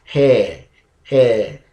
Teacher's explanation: it's a diphthong it means two vowels coming together to form a single unit of sound